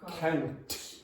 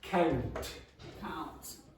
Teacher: that T in Brazilian Portuguese very often is going to sound like ch to my ear